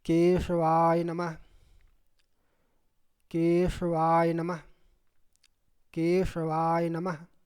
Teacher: तालव्य स है। दंत स नहीं है।